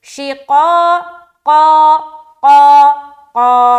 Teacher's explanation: تو یہ جو قاف ہے موٹا ادا ہوتا ہے، اس کے ساتھ الف ہے تو الف کو بھی موٹا کر دیں